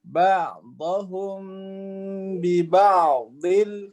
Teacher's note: ba'dhum ainnya itu bainiyah sehingga dia nggak boleh putus. Ba'dhum bukan, dia ba'dhum ain dengan dot itu nggak boleh putus.